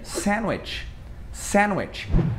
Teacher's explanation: Esse D, ele geralmente ele costuma ser mudo, principalmente lá pros americanos.